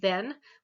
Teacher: The dental, so I'm putting usually my tongue between my teeth. I'm using my two teeth though to create the, then, the as in then, which is the voiced.